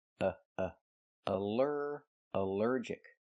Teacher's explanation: the a l l is not pronounced all, but pronounced uh, like in cup and up, because it's not stressed.